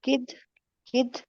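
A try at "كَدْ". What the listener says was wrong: नहीं, काफ पे तो जबर है, तो किद कैसे हो गया? कद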